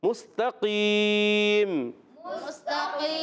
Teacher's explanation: تا کو باریک کریں گے، قاف کو موٹا کریں گے، قاف زبان کی جڑ تعلق کے نرم حصے سے ادا ہوتا ہے، اور وقف کرنے میں ہو جائے گا مد عارض۔